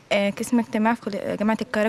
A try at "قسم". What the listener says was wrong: مش قسم. قسم. قسم بقاف.